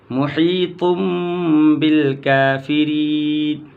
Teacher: واللہ محیط بالکافرین محیط تا دو پیش تن ہے، اس تنوین کے نون کو میم سے بدل کر کے پڑھیں گے